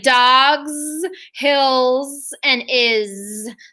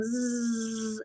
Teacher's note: he makes a sleepy z sound instead of his usual hiss in words like dogs hills and is